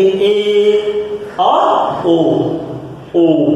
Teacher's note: जिन स्वरों को बोलने के लिए हमारी जीवा थोड़ा आधा ऊपर उठती है उसे अर्ध समृद्ध कहते हैं